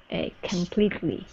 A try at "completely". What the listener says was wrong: There you go. Good, good.